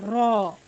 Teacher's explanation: را زبان کی نوک کا اوپری حصہ تالو کے کھرکھرے والے حصے سے لگ کر را، اس میں تھوڑا تکرار کی آواز ہوتی ہے